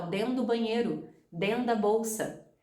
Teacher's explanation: Dentro da vira denda. Dentro do vira dendo. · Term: Connected Speech